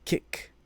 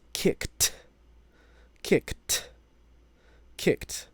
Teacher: When you say a voiceless sound, if you put your fingers up to your vocal cords, up by your throat, under your Adam's apple or above it, you will not feel any vibration when you say that C sound. You might feel your throat move a little bit up and down because the air is pushing out, but there will be no vibration as you do that. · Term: voiceless K